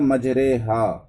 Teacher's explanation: فتحہ کو کسرہ کی طرف جھکائیں گے اور مجرے کہیں گے، اور الف کو یا کی طرف مائل کریں گے، جس سے فتحہ کسرہ مجہول کے مانند ہو جائے گا۔ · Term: امالہ